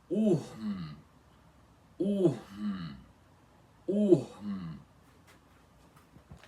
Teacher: Primeiro vocês vão ter que fazer o som do U normal, que é ur, quer dizer u, e depois a aspiração, que é assim, e fazendo a vogal aspirada ur, que é u aspirado. E logo em seguida vocês vão pronunciar esse M, fechando os lábios assim.